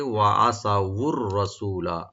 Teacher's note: বলবেন, ওয়া আসাউ, তো মিলাই পড়লে রার সাথে, ওয়া আসাউর রাসূলা, রাটাকে আমরা ডিপ করে পড়ব, সু একালে টানবেন, লামে কোনো টান নাই